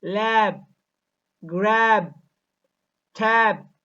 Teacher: B is never aspirated. B is sometimes not voiced when it occurs finally.